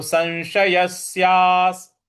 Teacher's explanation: स के ऊपर जो अनुस्वार है उसके आगे फिर श है इसलिए इसका उच्चारण हमें न ले आना है